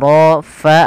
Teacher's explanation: alirkan nafas pada lafal Fa ini jangan diganti dengan Pa